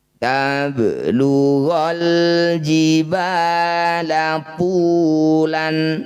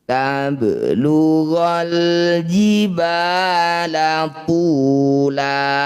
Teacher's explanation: Yang perlu hati-hati, mad iwad ini panjangnya 2 harokat saja ya. Bunyi tanwin ini kita ganti jadi fathah panjang.